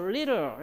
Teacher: little 할 때는 little 이렇게 해서 flap으로 가능하죠